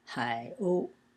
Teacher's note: Hai is pronounced in the third tone, and O is in the first tone